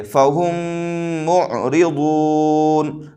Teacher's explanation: پر ادغام شفوی ہوگا، اور ادغام کا مطلب ہوتا ہے ملانا، تو میم کو میم سے ملا دیں گے لیکن غنہ کے ساتھ ملائیں گے ، اس لیے کہ میم کے اوپر تشدید ہو جا رہا